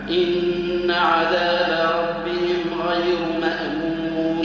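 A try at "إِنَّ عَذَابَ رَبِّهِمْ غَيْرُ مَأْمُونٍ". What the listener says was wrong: لا مامون اقطع الصوت في الهمزه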